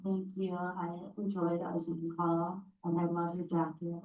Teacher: she has that very vocal fry, kind of high-pitched, very nasly.